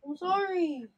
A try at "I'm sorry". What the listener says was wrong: yung intonation mo, I'm sorry.